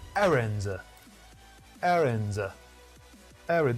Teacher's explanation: The first syllable is stressed. Errand. Both American and British.